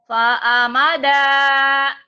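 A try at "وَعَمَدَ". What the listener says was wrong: Bukan Pak Amada tuh wa.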